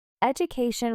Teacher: Education with stress on the CA syllable